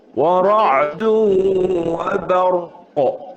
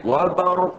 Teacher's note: Jadi kedua-duanya ra dan qaf pangkal lidah diangkat.